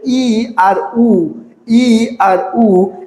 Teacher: ই আর উ উচ্চারণের সময় জিহ্বা একদম মানে জিহ্বার আগাটা বাঁকা হয়ে উপরের দিকে উঠে যাচ্ছে। তো তার কারণে এই ই আর উ কে বলা হচ্ছে উচ্চ স্বরধ্বনি।